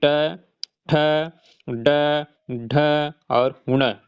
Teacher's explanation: उच्चारण की जो जगह है वो हमारे मुंह का मूर्धा भाग है। मूर्धा वाला हिस्सा है इसलिए ये मूर्धन्य कहा जाता है।